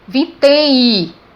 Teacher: Ele não está nasalizando, tem I, ele representa o som I. Então se eu for contar a quantidade de fonemas, eu vou contar com o M aqui, ou seja, com o som I, que está representado pela letra M. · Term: semivogal